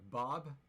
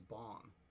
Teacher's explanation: with the low vowels, they were getting raised quite a bit. So a was becoming a, and ah was becoming aw.